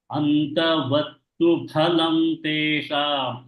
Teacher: It's not fa. It's not fa. It is pha.